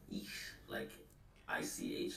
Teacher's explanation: you actually have to put your tongue like in the back of your mouth and then put air around it